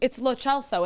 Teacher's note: It's Italian, so the CE is a ch sound.